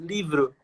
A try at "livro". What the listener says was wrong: Livro. You have to say you instead of O. Livro.